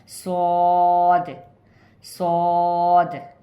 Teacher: ज़ुबान की नोक को नीचे वाली दांतों की जड़ में टच करते हुए थोड़ा मोटा पढ़ेंगे